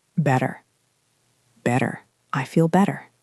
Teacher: in connected speech, those two T's turn into that soft D sound.